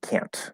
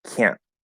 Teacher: If you do a glottal stop, the T is still there. It's just a glottal stop T. It doesn't sound like a T sound, just like a glottal stop D doesn't sound like a D sound, but it is still present in the form of a glottal stop.